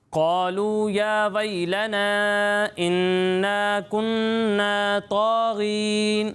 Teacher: واو مدہ کو بھی ایک الف کے برابر کھینچنا ہے، اسے زیادہ نہیں کھینچنا